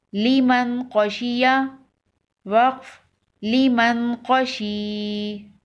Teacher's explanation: وقف کی صورت میں یا پر جزم لگ جائے گی تو یہ یا مدہ ہو جائے گی. یا مدہ کو ایک الف کے برابر کھینچ کر وقف کریں گے